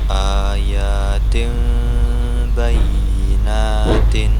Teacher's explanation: nun sukun atau tanwin ketika bertemu dengan huruf ba itu dibaca samar dan dengung. Nah, dengan merapatkan huruf dua bibir serta mendengung huruf mim huruf ee nun nun sukun atau tanwinnya berubah menjadi mim. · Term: iqlab